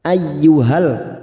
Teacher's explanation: terdapat Mad Jaiz kita samakan lima harakat kita panjangkan ya ayyuhalladzi masuk pada huruf ya yang bertasdid hanya masuk tanpa mendengung tanpa ditahan lama-lama